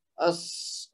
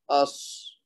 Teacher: صاد میں کیا ہوگا, اس, اور سین میں کیا ہوگا, اس. اس میں تھوڑا سا سیٹی دار آواز آئے گی, سین اور باریک سی ہوگی. صاد کی آواز تھوڑی موٹی کریں گے ہم تاکہ دونوں میں فرق ہو سکے